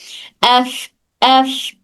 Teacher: ये सिफत हम्स में से है, सिफत हम्स, इसलिए यहाँ पे सिर्फ एयर हवा जारी रहती।